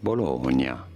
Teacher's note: You do want to stress on the middle syllable, on the Bologna.